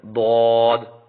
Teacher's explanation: اگلے حروف حافیہ جس کی تعداد 1 ہے. یہ زبان کی کروٹ اور اوپر کے داڑوں کی جڑ سے ادا ہوتا ہے